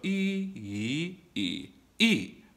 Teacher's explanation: e is a fourth tone it's a little more exaggerated